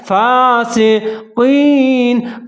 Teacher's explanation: काफ को कलकला है, काफ को मोटा पढ़ना है, दो नुक्ते वाला है, या साकिन है, काफ और या मिला के पढ़ेंगे, आगे नून के ऊपर ज़बर है, लेकिन जहाँ वक्फ करेंगे क्योंकि यहाँ पर आयत ख़त्म हो रहा है, इल्लल फासिकीन।